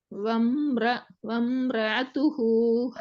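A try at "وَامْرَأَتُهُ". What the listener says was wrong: ஆதான் வருது. பாத்தீங்களா பாத்தீங்களா? வம்ர ஆதான் வருது. ஆ இல்லையே இது. அ வம்ர அத்துஹு அ அ. பாப்போம் அலிஃப்ல சவுண்ட் எப்படி வரணும்? அலிஃபினுடைய சவுண்ட் அ அ. ஓதினது சரியாங்கிறத செக் பண்றதுக்கு 2 விதமா ஓதி பாருங்க.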